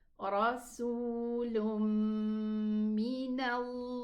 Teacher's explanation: the meme shadda has the highest ghunna. So we are going to pronounce the lam dhamma and then the meme shadda. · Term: idgham